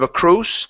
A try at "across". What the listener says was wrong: Open the mouth just a little bit more.